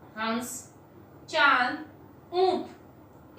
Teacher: नाक और मुंह दोनों से आवाज आती है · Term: चंद्र बिंदु